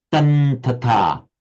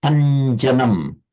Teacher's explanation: So it would be written as tum ta ta, but pronounced as tan ta ta, because the nasal takes on the quality of the following ta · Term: anuswara